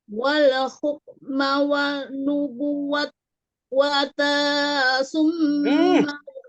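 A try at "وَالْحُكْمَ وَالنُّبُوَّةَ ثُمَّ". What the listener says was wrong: Mata itu panjang lagi tuh, nggak ada. Nggak boleh. Wal hukma wan nubuwata summa yaqula linnas.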